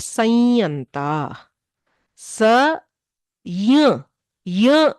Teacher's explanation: this ಅನುನಾಸಿಕ property that is the nasal tone is inherited from the ಅನುಸ್ವಾರ because ಅನುಸ್ವಾರ is nasal what ever ಆದೇಶ we do for ಅನುಸ್ವಾರ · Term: ನೇಸಲ್ಯಕಾರ